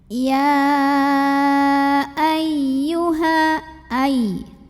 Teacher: Mad tabi'inya adalah fathah berdiri pada kata ya dan hamzahnya adalah a pada kata ayyuha. Maka ya-nya dipanjangkan boleh 4 boleh 5 harokat. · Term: mad jaiz munfasil hukmi